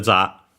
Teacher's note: accented just like in English, so on the ja, on the first syllable